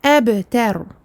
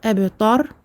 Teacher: Le ta est un ta aminci et non pas un ta emphatique.